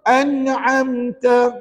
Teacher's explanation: Siratal ladzina an'amta 'alaihim. Pastikan an'amta tu dengung ke tidak? Tak dengung. Jadi kalau tak dengung kita kena baca dengan izhar.